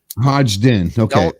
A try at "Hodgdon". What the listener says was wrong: Don't pronounce the first D. The first D is silent, basically.